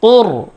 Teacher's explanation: এখানে রর উচ্চারণ মোটা হবে, পুর হবে